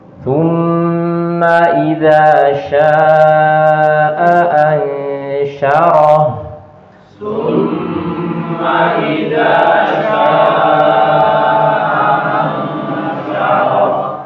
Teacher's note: Ya, huruf shinnya nanti, ya, huruf shin itu tengah lidah itu diangkat, ya kan, sehingga suara itu menyebar di mulut.